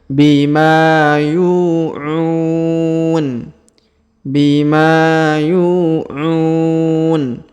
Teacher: huruf ma kita panjangkan 2 harokat karena terdapat alif di depannya